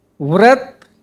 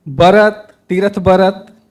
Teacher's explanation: सरगुजिया में व कर जगह में ब का प्रयोग होती अधिकतर